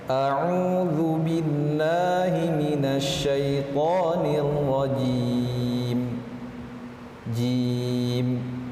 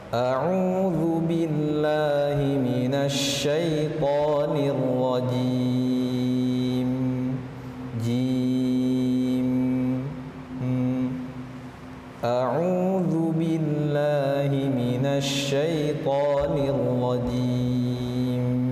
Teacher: cara mengucapkan huruf mim pada akhir ayat ini tidak matikan total ya, ada sedikit aliran. Karena itu adalah sifat dari huruf mim tersebut, yaitu tawassut, sedikit mengalir.